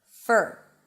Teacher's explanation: when the word for is unstressed, and that's usually the case, then the for is reduced to fur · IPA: fər